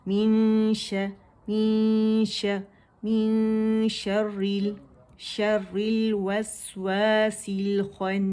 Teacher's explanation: غنہ کرتے ہوئے شین کے مخرج کے ہم قریب جائیں گے، ٹچ نہیں کریں گے. جب 2 کاؤنٹ کا کاملہ گریڈ کا غنہ ہو جائے گا، یہاں جو نون مشدد ہے ہر غنہ مشدد، اس پہ ہم نے اکمل گریڈ کا دی موسٹ کمپلیٹ لانگسٹ غنہ کیا تھا، اور یہاں پہ جو ہے ہم کاملہ گریڈ کا غنہ کریں گے، دا کمپلیٹ لانگ غنہ. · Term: اخفا